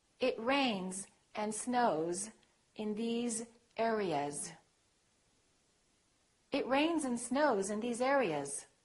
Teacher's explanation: when it's a voiced consonant followed by an S, the S sounds like Z.